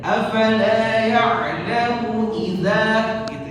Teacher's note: Jangan nanti sebagian orang ada munya dipanjangin.